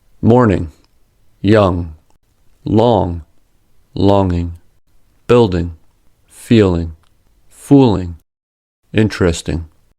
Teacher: The ng sound normally does not include a g sound. In English, exists only at the end of a syllable.